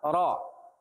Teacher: berharokat fathah dibaca tafkhim tebal